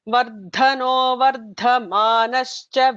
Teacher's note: Vardhano, the Mahaprana has to be emphasized more.